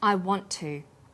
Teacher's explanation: is held slightly longer on the tongue then to is pronounced the T sound is pronounced only once